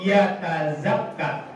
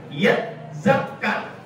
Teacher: Ketika mati, maka ta itu diidgham dengan zai karena huruf yang mirip-mirip. Ya, mirip-mirip dengan zai dalam pengucapannya.